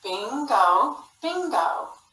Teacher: the o is in the final syllable and it's an open syllable and it's saying the long vowel sound